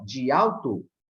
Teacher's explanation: essas duas palavrinhas, dia alto, ela vai se tornar praticamente uma palavra só. De alto, porque houve uma elisão.